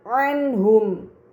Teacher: nun sukun bertemu dengan huruf ha maka nun sukun dibaca secara jelas